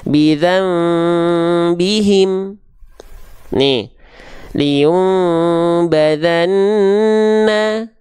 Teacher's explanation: membalik bunyi nun sukun ke bunyi mim sukun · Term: iqlab